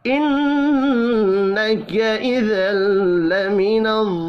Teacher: नून मुशद्दद पर गुन्ना करेंगे